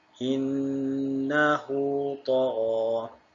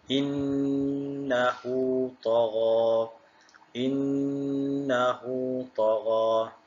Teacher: Cara bacaan maksilah qasirah ialah dibaca panjang kadar 2 harakat.